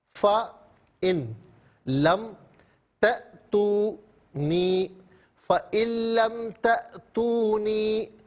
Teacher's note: تا حمزہ ہے، ساکن ہے، جھٹکے کے ساتھ پڑھا جائے گا